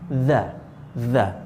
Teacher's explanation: Hai gigi itu ini si lidah tuh Hai gigi bawah nih lidah tuh menempel ujungnya ke ujung gigi atas